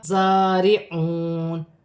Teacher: زا سیٹی والا جماؤں کے ساتھ ادا کیا جائے گا، مشدد ہے اور کھڑی زبر بھی ہے، ایک الف کی مقدار کھینچ کر بھی پڑھا جائے گا. · را کے نیچے زیر کی حرکت ہے، را باریک پڑھی جائے گی